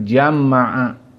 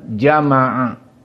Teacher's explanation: kalimat jama'a dengan tasdidil mim, maka di sini dari qiraah Ibnu Amir ditasdidkan mim